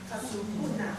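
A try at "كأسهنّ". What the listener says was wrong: There is shadda here. Ka'suhunna.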